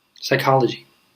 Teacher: We don't pronounce in English the P, although there is a P. And when there's a PS, we never pronounce the first letter.